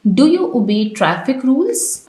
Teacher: In yes no questions our voice rises at the end। के yes no questions वाले जुमलों में इनके आखिर में एंड में जो हमारी वॉइस है, हमारी जो आवाज़ है वो राइज हो जाती है, वो ऊपर की तरफ चली जाती है यानी तेज हो जाती है।